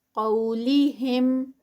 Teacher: قو میں واو لین ہے اور قاف ہیوی ہوگا